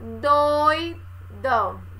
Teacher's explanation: o O no som sai mais forte do que o I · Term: ditongo